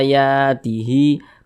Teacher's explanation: kalau ada huruf hamzah dibaca panjang. Nah, maka diantaranya namanya adalah mad badal. Panjangnya 2 harokat juga.